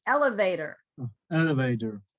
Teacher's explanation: this middle t is going to sound like a d · Very English, American English thing is we make these middle T's sound like a D